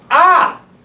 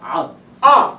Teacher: the aleph and the ayin are very similar sounds, but the difference is that the ayin is a little more guttural, but it's very slight